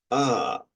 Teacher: esta palabra en el final de esta palabra es este ah Esta es una a que se le conoce como a retroflex